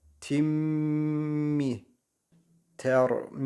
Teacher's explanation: mii uzatır [Müzik] burada cezimli Mim harfinden sonra B harfi gelmiş Mim harfini Burada birazcık tutacağız genimizde · mim harfi gelmiş Buna iki Esre de diyoruz tenvin de diyoruz tenvinden sonra mim harfi gelmiş idgam gunne kuralı var Dolayısıyla buradaki tin diye değil de tim diye okuyacağız Mim harfine Şedde vererek okuyacağız tin demeyeceğiz Tim diye geçiş yapacağız